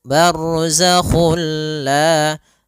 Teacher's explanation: kita memasukkannya secara utuh, secara seluruhan kepada huruf lam sehingga tidak menyisakan sedikit daripada bunyi huruf nunnya ya. Sehingga langsung masuk barzakhulla dan dia bila ghunah berarti tidak boleh disertai dengan ghunah. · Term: idgham kamil